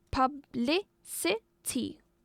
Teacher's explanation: This word has 4 syllables. As for the stress, it is on the second syllable.